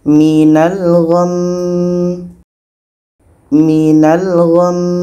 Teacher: Sama dengan ini, mi ini pendek, maka kita matikan. Maka kalau kita berhenti, kita dengungkan dulu 2 harakat, baru matikan mimnya.